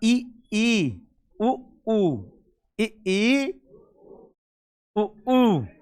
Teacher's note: जब आप इ ई और उ ऊ बोलते हो तो आपका जो मुख है वो लगभग बंद रहता है केवल 10 पर खुलेगा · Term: सम्रत